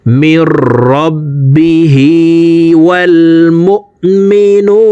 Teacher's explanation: নু এখানে তিন আলিফ টেনে নুনকে সাকিন করতে হবে, কারণ পেশের বাম পাশে জজমালা ওয়াও মদের হরফ, তো এই মদের হরফের বামের হরফে ওয়াকফ হইলে মধ্যে আরজি তিন আলিফ টেনিয়া পড়িতে হয়।